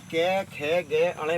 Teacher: कंठ से, यानी कि गले से बोले जाते हो, गले से। तो अगर हम कै खे गे अणे बोलते हैं तो हमारे कंठ पे जोर पड़ता है। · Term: कंठ्य व्यंजन